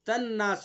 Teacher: نون مشدد ہے تو اس لیے اس کے اندر غنہ کریں گے